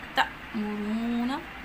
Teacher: तअमुरूना अलिफ पे जज़म है, ये हमज़ा शुमार होगा तो झटका दे के पढ़ेंगे। रा की आवाज़ को मोटा पढ़ेंगे, रा के ऊपर पेश है। · सीन हरूफ सफ़िरिया में से इसमें सीटी की आवाज़ पाई जाती है। तअमुरूना अलिफ पे जज़म है, ये हमज़ा शुमार होगा तो झटका दे के पढ़ेंगे।